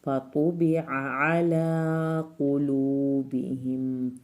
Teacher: यहाँ पर 2 आइन है, दोनों आइन हल्क से निकलेंगे।